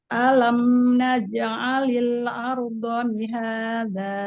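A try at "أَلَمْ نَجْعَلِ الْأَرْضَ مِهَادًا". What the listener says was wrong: Bo sama da, bedakan. Kalau bot dia ujung lidah tuh cuma nempel aja di makhraj huruf dal, nempel aja. Jadi jangan ditekan yang makhraj huruf dalnya. Jangan ditekan, nempel aja. Nanti kalau dia ditekan, maka yang keluar jadi huruf dal, ya.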